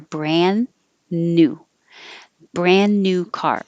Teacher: So that beautiful silver brand new car, not a lot of changes there except brand new. You don't have to say the D, brand new. Just hold because you're going to a word after it that has an N. So hold it there, brand new.